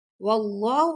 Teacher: اللہ کے لام کو موٹا پڑھیں گے